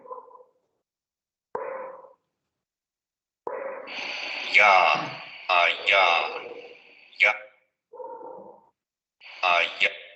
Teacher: Vean cómo justamente sube la lengua hacia la zona palatal.